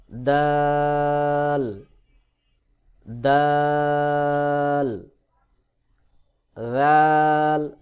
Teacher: দাল দাল জিহ্বার আগা সামনের উপরের দুই দাঁতের গোড়ার সঙ্গে লাগাইয়া অর্থাৎ তা এবং দাল একই জায়গা থেকে উচ্চারণ হয়